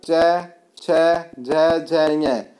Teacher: तालु और जीभ के स्पर्श से, किस किस के स्पर्श से, तालु और जीभ के स्पर्श से बोले जाने वाले व्यंजन जीभ के मोटे वाले भाग और तालु के स्पर्श से बोले जाने वाले वर्ण तालव्य कहलाते हैं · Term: तालव्य व्यंजन